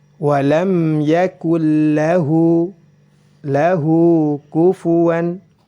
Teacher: hu-nya dibaca panjang dua harokat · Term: mad silah